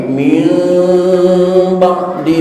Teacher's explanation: Yang keempat hukum tajwid itu adalah iqlab indal ba'i, ketika nun mati atau tanwin ketemu ba. Miman, suaranya suara menggunakan mim, tapi ingat ma'al ikhfa'i, ada ikhfa'nya